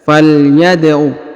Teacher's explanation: huruf Dal berharakat sukun maka dipantulkan atau diqalqolahkan ya huruf Dal dipantulkan atau [Musik] diqalqolahkanal huruf na dipanjangkan dua